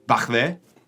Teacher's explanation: They're just saying back there, but in Liverpool, they have a thing called velar fricatives with their K sound, which is the k sound.